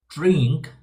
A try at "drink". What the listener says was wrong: You see the way you did that? Ink. That little up and down. Drink. Now I want that to come down. Drink.